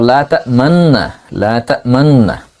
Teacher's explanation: এরপরে আরেকটা নুন আছে জবরওয়ালা নুন, না। তো নুন সাকিনের পর নুন আসলে সেটা ইদগাম হয়েছে। তো এখানে আমরা যদি ইদগাম প্রথম নুনটাকে পেশ বাদ দিয়ে সাকিন দেই, তারপর তেলাওয়াত করি, তাহলে শব্দটা হলো লা তা'মান্না, লা তা'মান্না।